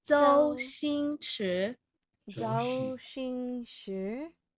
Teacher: 周 first tone, 星 first tone, 池 second tone.